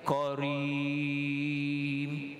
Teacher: apabila kita baca karim, jangan kita kaf ditebalkan.